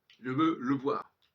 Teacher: Quand je dis je veux le voir, le E de le, il est évacué. Il devient muet.